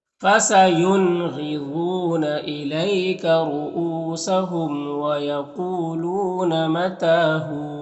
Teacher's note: यहाँ पर वक्फ़ करेंगे तो वाव का ज़बर सुकून से बदल जाएगा, तो फिर यहाँ पर वाव मद्दा होगा। वाव मद्दा को एक अलिफ के बराबर खींच कर पढ़ेंगे